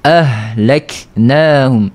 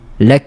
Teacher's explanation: Lazim juga daripada mengalirnya sifat huruf ha ni, dia tak boleh terputus suara. Suara tak boleh terputus. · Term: rokhawah